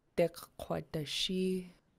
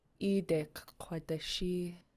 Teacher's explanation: attach the first K to the previous vowel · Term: double K